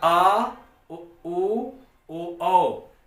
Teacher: आ उ ओ ये जीभ के पिछले वाले भाग से उच्चरित हो रहे हैं, इसलिए ये आपका पश्च स्वर कहलाएगा।